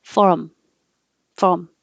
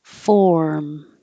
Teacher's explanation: So if anybody confuses these, when you say them, make sure that when you say form, you're holding your tongue in the R position long enough so that the R can be heard